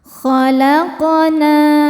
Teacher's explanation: Syai'in khalaqna, khalaqu, qaf sukun hukumnya qalqalah sughra karena bersukunnya, sukunnya sukun asli dan berada di tengah bacaan. Cara bacanya dipantulkan dengan pantulan yang kecil.